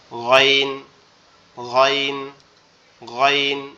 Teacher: গইনটা হচ্ছে আমাদের কণ্ঠনালীর গলার ভিতর থেকে, মানে কণ্ঠনালীর শেষ ভাগ, গলার সাথে আমাদের এই যে মাথার যে অংশটা লেগে আছে, যে অংশটা, এই অংশটা থেকে উচ্চারিত হয় গইন, গইন, গইন, এইভাবে।